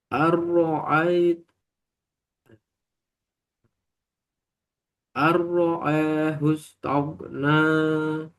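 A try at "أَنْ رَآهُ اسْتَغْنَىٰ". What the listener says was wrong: dan jangan ada ain.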